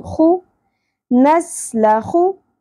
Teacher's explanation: Next ہے نَسْلَخُ سین سیٹی کے ساتھ نَسْلَخُ خو پر ہوگا اور خراش بھی ہونی چاہیے. خو نَسْلَخُ من اظہار ہوگا.